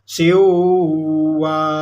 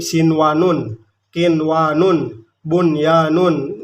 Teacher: nun mati itu diizharkan atau jelas bunyi n-nya